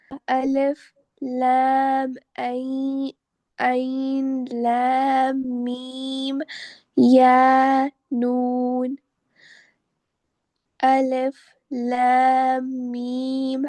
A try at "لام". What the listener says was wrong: رکیے رکیے، یہ الف نہیں ہے. دیکھیں، الف جب بھی ہوتا ہے نا اور اس کے بعد کوئی لیٹر آتا ہے تو الف ہمیشہ الگ لکھا رہتا ہے، اٹیچ